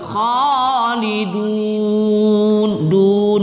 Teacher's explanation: kita baca panjang sedikit lebih panjang sedikit pada Mad Arid